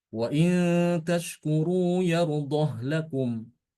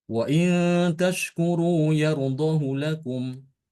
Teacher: wajah pertama adalah dengan mensukunkan H waainaskuru yardoh lakum dan yang kedua sama dengan bacaan hafaz waain